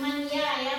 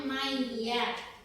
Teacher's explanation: Maka bunyinya itu kita memasukkan huruf ya, bukan man ya, bacanya maya. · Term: idgham bihunah